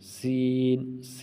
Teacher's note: تو ثا میں سیٹی کی آواز نہیں ہے، سین اور صاد دونوں میں سیٹی کی آواز، ان دونوں میں سیٹی کی آواز ہے۔ ثا اس میں سیٹی کی آواز نہیں، سین سیٹی کی آواز، صاد اس میں سیٹی کی آواز